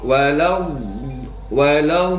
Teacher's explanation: mad lazim kilmi sehingga dibaca enam ketukan ya enam harakat